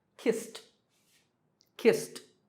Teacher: the last sound is s, which is unvoiced or voiceless